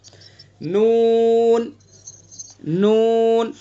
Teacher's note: نون کا مخرج زبان کا کنارہ ایک ناب سے لے کر دوسرے ناب تک اور اوپر کے دانتوں کے مسوڑے